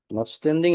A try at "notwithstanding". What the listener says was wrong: you you are missing the with is very important